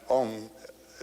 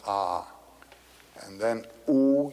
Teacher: it's a it's a wonderful word it's written a u m you start in the back of the mouth ah and then o you fill the mouth and M closes at the mouth